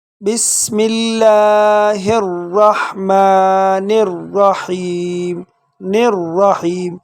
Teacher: تو یہاں پر میم کے جو اوپر کڑا ہے ہم کھینچیں گے، تو اس کو پڑھیں گے بسم اللہ الرحمن الرحیم الرحیم۔ نون کو ڈائریکٹ را کے ساتھ ملائیں گے اور بیچ میں الف لام حذف ہو جائے گا اور را کو یہاں بھی پر پڑھیں گے۔